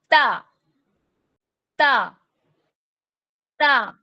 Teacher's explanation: تا کی ادائیگی میں ہم نے نتعی پر اپنی نوکل لسان کو لگانا ہے، جہاں سے ہمارے کھردرے مسوڑوں کی ابتدا ہو رہی ہے، اور ادا کرنا ہے تا، تا، تا۔ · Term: حروف نتعیہ